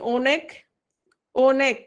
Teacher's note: অ অ উচ্চারিত হয়েছে, অটা অই উচ্চারিত হয়েছে, এটা হচ্ছে বিবৃত উচ্চারণ।